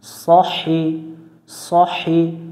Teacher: এই শব্দটা আমরা খেয়াল করে পড়বো সদ জবর স হাজের হি এটা হচ্ছে লম্বা হা গলার মধ্য থেকে বাতাস বের করে উচ্চারণ করব সহি সহি সাহি পড়া যাবে না বা সহি পড়া যাবে না